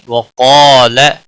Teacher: قاف حروف مستعلیہ میں سے پر پڑا جائے گا. مستعلیہ کے بعد الف آیا ہے یہ بھی پر پڑا جائے گا.